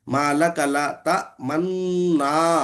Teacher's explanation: असल में माला का ला ता मनुना था। नून का गुन्ना करते वक्त होठों को आगे बढ़ाते हुए ना को अदा करे, इसको इश्माम भी कहते हैं।